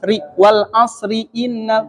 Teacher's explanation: Kalau kita baca ro-nya ri itu tipis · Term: tarqiq